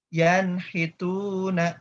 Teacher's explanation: Jadi langsung dibaca jelas nunnya. Tidak ditahan. Tidak ditahan. Jadi langsung ke huruf H dan Tu.